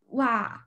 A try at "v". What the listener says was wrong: Not wa. Wei. Va. Va. Your teeth have to touch your lip. Va.